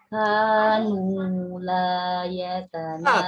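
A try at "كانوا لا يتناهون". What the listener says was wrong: K-nya kurang tegas, sidahnya kurang. Kanu begitu, Saudara.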